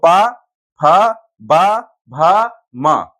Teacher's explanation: सभी जो वर्ण हैं वो कहां से? होठों के टकराने से, यानी इनको उच्चारण करते समय होठ टकरा रहे हैं · ओष्ठ यानी होठों से, होठों के टकराने से निकलेगी